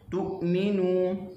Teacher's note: Wala tu'minu, tu hamzah syiddah, suara tertahan kerana kuat berpegang dengan makhraj huruf